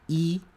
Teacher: here this is e the the vowel es in heat and it is very high in tongue position so it has a very low F 1